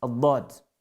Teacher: la lettre Dad, on a besoin des bords de la langue.